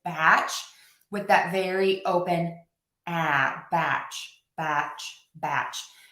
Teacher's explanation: You might be hearing a slight s sound because um my mouth is closing a little bit for that b and that ch sound.